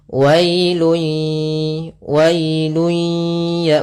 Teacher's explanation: Apa yang kita masukkan adalah suara tanwinnya atau suara nunnya ke huruf ya. Maka hilang bunyinya, tapi dia masih menyisakan suara bunyi dengan gunnahnya. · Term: idgham bi gunnah